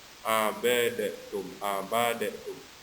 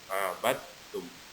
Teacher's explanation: Kemudian dal sukun atau dal mati, kemudian bertasdid langsung ke huruf ta, jadi tidak dikolkolakan huruf dalnya, bukan abadatum, abadatum, jadi langsung ke huruf ta, abadtum.